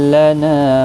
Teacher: نا الف مدہ ہے، ایک الف کی مقدار کے برابر کھینچ کر پڑھیں گے